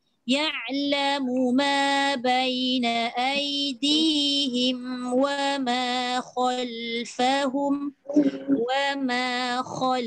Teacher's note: Khal tu sekejap lah mulut tu dia jadi bulat sikit sebab dia isti'la.